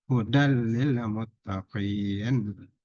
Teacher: dimasukkan ke huruf lam atau ro, ditasdid, dan tidak dengung, baca biasa · Nah, ayat ini juga berkaitan ilmu tajwid diakhiri dengan mad arid sukun. Nun berbaris fathah berubah jadi sukun arid karena wakaf berhenti. Bisa dibaca 2 harokat.